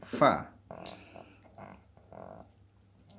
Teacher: huruf fa itu makhrajnya di dalam bibir, di bawah serta ujung gigi seri atas